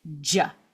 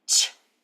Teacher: It's a pop j. And I'm using my voice. When I don't use my voice, it sounds like ch.